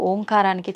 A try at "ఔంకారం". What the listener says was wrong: అది ఓంకారం కాదు, ఔంకారం. మీరు మనం పలకడమే దాన్ని తప్పు పలుకుతున్నాం. మనం మాట్లాడుతున్న ప్రతి మాటల్లో ఎక్కడో ఒక చోట అకారము ఉకారము మకారము ఉంటాయి. అకార ఉకార మకార అర్ధమాత్ర ఇది ఓంకార. ఔం అని ఉచ్చరించినప్పుడు అకారము ఉకారము రెండూ పలకబడి మూకారం దీర్ఘమవుతుంది.